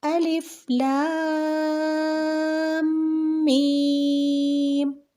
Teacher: اب میں نے لام اور میم کو اتنا کیوں کھینچ کے پڑھا ہے؟ اس کی وجہ یہ ہے کہ لام اور میم پہ لگی ہوئی ہے مد۔